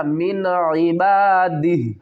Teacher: اگر ہم سٹاپ کریں گے تو ہا کو ساکن پڑھیں گے، من عبادہ، نون ساکن کے بعد حروف حلقی میں سے عین آ رہا ہے تو یہاں پر ہم اظہار کریں گے